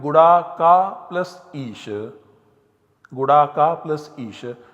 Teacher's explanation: where you have long A followed by E in the compound. So Samhita is obligatory. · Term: Guna Sandhi